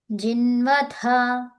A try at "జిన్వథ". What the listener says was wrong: జిన్వ ఇక్కడ ద T H A నా D H A నా